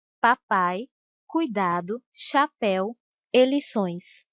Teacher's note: um ditongo decrescente quando a semivogal vem depois da vogal